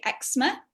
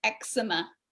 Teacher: in british english we say eczema two syllables eczema and in the recording the guy was american and he called it eczema which is three syllables